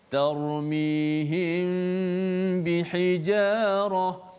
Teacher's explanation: Maka bila kita jumpa dalam Quran ada hukum mim mati bertemu dengan ba, kita kena bacanya secara ikhfa syafawi. Kita rapatkan kedua-dua bibir kita, dan seperti biasa hukum ikhfa syafawi ni kita kena panjangkan gunnah kita. Kalau baca lambat, bacaannya kiraan gunnah itu dilambatkan sedikitlah.